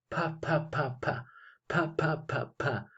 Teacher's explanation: yo pongo mis dedos índice y corazón en mi garganta y veo que no hay vibración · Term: sonido sordo